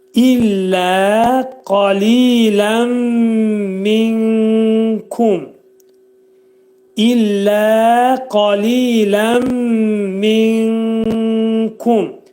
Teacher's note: Nun hərfi kəfin məxrəcində gizlədilir və 3 saniyə müddətində. Buna İxva-i kubra deyirlər təcvid elmində.